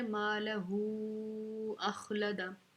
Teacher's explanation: نقطے والی خا ہے تو ہم نے اس کو موٹا پڑھنا ہے